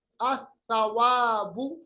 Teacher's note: لام جو ہے یہ ماسک ہو گیا، اس کی جو پہچان تھی وہ ختم ہو گئی، حالانکہ لکھا جاتا ہے، پڑھا نہیں جاتا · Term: حرف شمسی